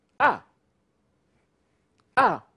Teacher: and the last, it's a falling tone